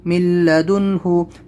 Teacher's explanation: یہاں پر اظہار ہوگا تو نون ساکن کے بعد میں ہا حلقی لیٹر ہے، تو اس لیے یہاں پر ہم اس کو ظاہر کر کے پڑھیں گے نون کو